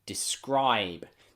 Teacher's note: in many british english accents the b is a little bit softer when it comes at the end of words